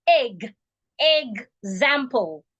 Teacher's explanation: EX has 3 different types of pronunciations. If there is a vowel sound after the EX spelling, it will sound eggs.